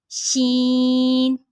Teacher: زبان کے درمیان اور اوپر کے تالو کے درمیان سے، زبان کے درمیان اور اوپر کے تالو کے درمیان سے، شین.